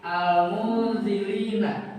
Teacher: Samar itu berarti hampir masuk ke dengung. Tapi bukan dengung. Masih kelihatan nunnya.